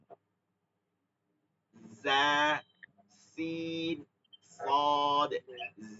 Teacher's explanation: এই তিনটার উচ্চারণের স্থান এক জিহ্বার আগা নিচের দুই দাতের আগা